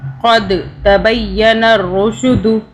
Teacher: اب یہاں دال ہے تو دال پہ قلقلہ کرنا ہے اور دال پہ ذرا جھٹکے سے پڑھنا ہے